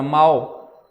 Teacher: O L ele tem som de U.